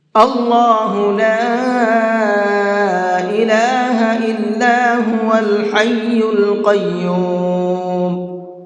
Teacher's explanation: اللہ لا الہ الا هو الحی القیوم۔ اللہ کے لام کو پر کر کے پڑھیں گے، یعنی کہ منہ بھر کے پڑھیں گے